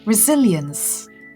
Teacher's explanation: The stress falls on the second syllable, resilience